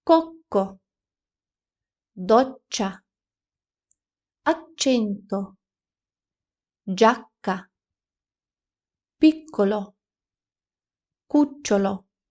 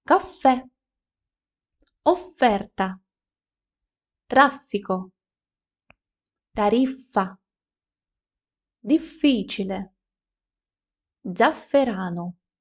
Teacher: подвійні приголосні в італійській мові вимовляються дуже чітко